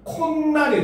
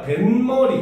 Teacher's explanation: 니은 소리가 덧나는 경우, 즉 첨가되는 경우입니다. 그래서 코와 날이 합쳐졌는데 발음을 하니까 콧날이 되는 거야.